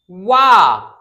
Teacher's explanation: वा सॉरी, कंठ और तालु से नहीं, दंत और ओष्ठ से होता है, ये दंतोष्ठ व्यंजन होता है